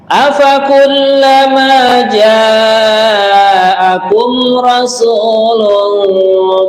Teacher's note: Ja kita panjangin sampai empat harakat nggih. Namanya mad wajib muttasil.